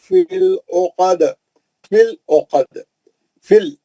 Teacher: وشر النفاثات فی العقد، فی العقد، فل، یہ لام پہ جو جزم ہے فا کے زیر کو پکڑا، وہ یا بھی سائلنٹ ہے، وہ یا خالی ہے، وہ سائلنٹ ہے، نہیں پڑھ جائے گی